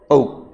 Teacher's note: औ बोलोगे तो जबड़ा नीचे जाएगा